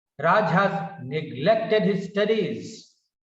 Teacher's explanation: So, study is also important. Therefore, falling tone is given on studies.